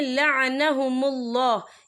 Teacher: یہاں اللہ کا نام پر پڑھا جائے گا کیونکہ اللہ کے نام سے پہلے پیش ہے